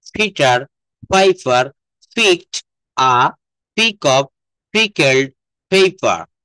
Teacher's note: এই পিটাকে আমরা পি বলবো না, এটা বলবো ফ, ফ। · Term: অ্যাসপিরিয়েটেড সাউন্ড